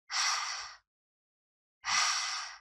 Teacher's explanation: Tighten your throat muscles when you pronounce the regular /h/, As you do this, you are constricting the air passage making a breathy sound